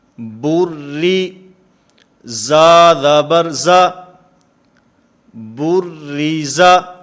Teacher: تو یہاں پر بھی کیونکہ را کے نیچے کسرہ ہے، زیر ہے، اس وجہ سے اس را کو باریک پڑھا جائے گا، اس را کو پر نہیں پڑھا جائے گا. با را نام لیتے ہوئے پر پڑھیں گے، لیکن ملاتے ہوئے اس کو باریک پڑھا جائے گا.